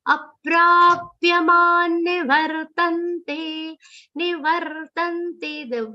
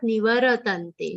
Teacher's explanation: The ra between va and ta is half, not nivaratante. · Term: the ra sound is half